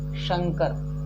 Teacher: मैंने जुबान को तालु में टच किया और घर्षण पैदा किया। वो जब आप तालव्य श का उच्चारण करेंगे तो और निश्चित डेफिनेटली आप घर्षण पैदा करोगे।